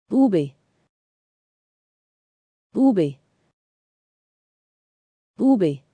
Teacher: This letter sounds much like the Spanish B. The lips do not touch and there is less aspiration.